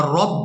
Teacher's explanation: اب یہاں پر ہم نے را کو پورا ادا کرنا ہے کیونکہ اس کے اوپر زبر ہے